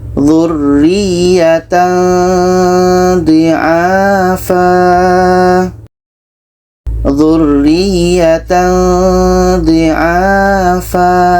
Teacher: Ketika kita baca tanwin, kita sudah merasakan huruf dha. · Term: ikhfa hakiki